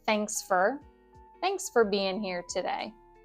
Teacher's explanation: So very rapid speech, those vowels get dropped or, changed into this schwa sound. And for becomes fur in rapid speech.